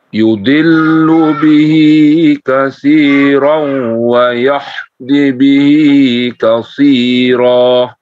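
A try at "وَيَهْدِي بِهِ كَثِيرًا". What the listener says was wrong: Wayahdi, di-nya 2 harokat juga. Wayahdi bihi katsira.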